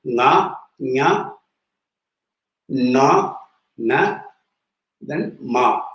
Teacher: you have to get a nasal sound. So the sound comes not just from the mouth, but from also through your nose. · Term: nasal consonants